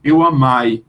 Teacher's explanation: os portugueses não pronunciam esse E e esse I com o som de EI, mas com o som de AI